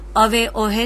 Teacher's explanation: અવે ઓહે તો ત્યાં આગળ હ શ્રુતિનો અભાવ છે એટલે કે માન્ય ભાષામાં જ્યાં હ બોલાય છે ત્યાં સુરતીમાં નથી બોલાતો